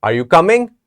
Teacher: three words are you coming but this is a question now normally when we are asking a question we are raising our voice at the end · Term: rising intonation